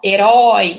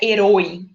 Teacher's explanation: esse acento agudo tá aí dando a indicação de que a gente vai abrir bem essa vogal